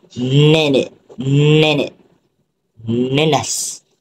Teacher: Ujung lidah akan menyentuh gusi, kemudian udara akan keluar ikut hidung kerana udara akan tersekat di dalam mulut, seperti nenek, nenas.